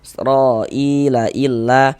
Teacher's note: Tapi karena yang dipanjangkan di sini adalah huruf hamzah, maka dia terjadi mad badal. Panjangnya 2 harokat.